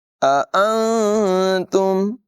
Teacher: नून साकिन में इख़्फ़ा करेंगे, यानी इसकी आवाज़ को ज़ाहिर नहीं करेंगे। अंतुम नहीं पढ़ेंगे बल्कि नाक में आवाज़ ले जाएंगे, गुन्ना करेंगे।